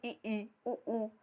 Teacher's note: हम जब ई बोलेंगे तो हमारा जो जीवा है, ठीक है, वो बिल्कुल ऊपर चली जाएगी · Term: संवृत स्वर